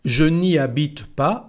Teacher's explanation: Ni, como si fuera una sola palabra, ni. Habite, no se pronuncia la H.